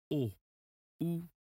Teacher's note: your lips have to go forward they move forward and in a rounded way